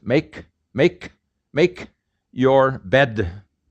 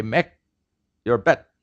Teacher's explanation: A consonant at the final is not released.